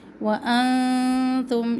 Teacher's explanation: وانتم یہاں پہ باریک اخفا